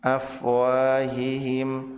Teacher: Wa dibaca panjang 2 harokat disebut sebagai mad tabi'i.